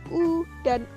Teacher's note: vokal yang dihasilkan oleh gerakan turun naiknya lidah bagian belakang atau Pangkal lidah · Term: vocal belakang